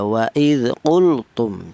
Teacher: lam matinya dibaca jelas ya. Waid qultum jangan disamar. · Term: izhar fi'li